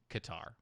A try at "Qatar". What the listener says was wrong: No, it's not a U there. It's ka. QAT. QAT is pronounced cat.